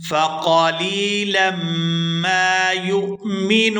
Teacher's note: لام کو میم مشدد کے ساتھ ملائیں گے تو غنہ کریں گے۔ فَقَلِيلًا مَا يُؤْمِنُونَ، یہاں پر وقف کریں گے تو وقف کی صورت میں نون جو ہے یہ ساکن ہو جائے گا، ما یؤمنون۔